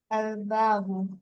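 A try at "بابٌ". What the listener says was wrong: আলিফ লাম নাই তো। বাবুন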